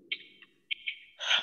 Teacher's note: হামজাটা স্পষ্ট করার জন্য হলকের শুরুতে একটু ধাক্কা দিয়ে